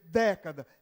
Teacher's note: década, é um E, tem que ser aberto porque é tônico